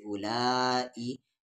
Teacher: مد کے سمبل کے بعد حمزہ ہے تو اس مد کو 3 سے 4 الف کے برابر کھینچیں گے